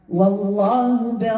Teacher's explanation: اللام دي اسم الجلال مفخمه